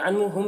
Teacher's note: नून में इज़हार हक़ीक़ी हो रहा, इसे जल्द पढ़ना है।